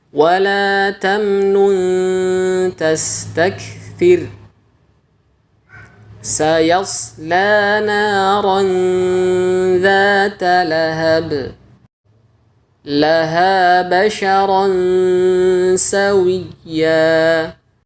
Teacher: bisa kita dengarkan ghunah pada contoh-contoh bacaan Ikhfa ini ditipiskan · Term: ghunah Ikhfa yang bersifat tipis